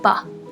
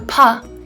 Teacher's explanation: As you can see on the spectrogram on the left, the vocal fold vibration starts almost immediately for the sound ba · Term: voice onset time